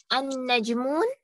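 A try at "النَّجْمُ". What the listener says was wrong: Najmu, only one dhamma, not tanween. And Najmu.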